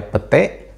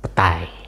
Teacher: Di mana silabel tersebut diisi oleh onset te dan juga vokal e, te, ya. Kemudian vokal atau monoftong e di situ didiftongisasi menjadi diftong ai, ya, sehingga pete menjadi petai.